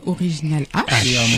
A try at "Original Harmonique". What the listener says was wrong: Harmonique. Faut faire la liaison.